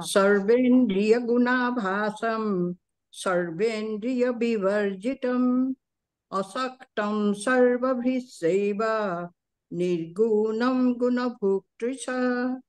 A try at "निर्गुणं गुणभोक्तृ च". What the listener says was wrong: निर्गुणम, वहां पे रुकना नहीं है। निर्गुणम गुण भोक्तृ च, और कम रुकिएगा गुणम पे। निर्गुणम।